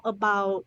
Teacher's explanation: About, dropping that t, about, about, about. So again, we don't hear that final consonant sound.